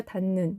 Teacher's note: 히읗이 뒤에 니은이 결합할 때 니은으로 발음되는 경우에 속하겠죠. 네, 그럼 바뀐 이유는 아까 선생님 방금 설명한 대로 히읗이 음절 끝에서 디귿으로 발음나고 이 디귿이 니은을 만나면 비음화가 되어서 닿는이 되겠습니다.